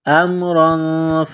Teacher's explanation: یہاں پر غنہ کریں گے، آواز ناک میں چھپائیں گے